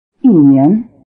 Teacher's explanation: Notice that the tone on 1 一 becomes falling before the rising tone of 年